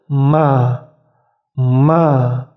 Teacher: bibir atas dan bibir bawah bertemu kemudian diucapkan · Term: mean